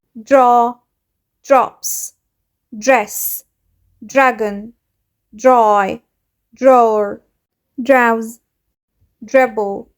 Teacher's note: في الكلمات دي كلها سمعت الدي والار صوتهم ج ج · الاتنين مع بعض مش هيعملوا صوت در، لا هيعملوا صوت جر، كأن في صوت ج بسيطة قوي